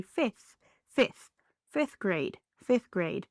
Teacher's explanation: you don't really have to drop the th, but you can drop the f.